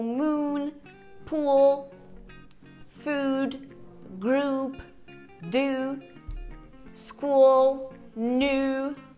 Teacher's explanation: O primeiro é um U longo, como o U de uva, o U da palavra tu. Ele aparece em palavras como moon, pool, food, group, do, school, new.